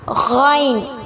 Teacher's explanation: غائن جو ہے اس کا مخرج ادنی حلق ہے. ادنا حلق کہتے ہیں حلق کا جو شروع کا حصہ ہوتا ہے جہاں سے خا ادا ہوتا ہے وہیں سے غائن بھی ادا ہوتا ہے.